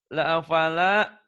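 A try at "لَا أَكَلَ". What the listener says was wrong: La akala, Pak, bukan pala ya.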